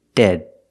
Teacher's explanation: it's a stop D at the end of dead